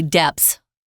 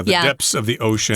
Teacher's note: We don't put the th in it